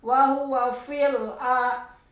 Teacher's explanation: alif lam komarnya jadi harus kedengaran L-nya